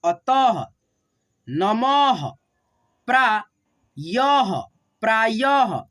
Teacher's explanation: दो विसर्ग लगेगा और उसको हम लोग ह के रूप में पढ़ते हैं